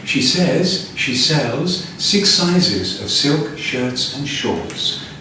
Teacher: voice goes down at the end so we can chunk the final parts together